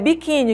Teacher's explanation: Na palavra biquíni, a sílaba tônica é qui, certo? Nesse caso, terminou em I.